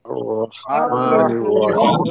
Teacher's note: আর এখানে তিন আলিফ টেনে পড়তে হবে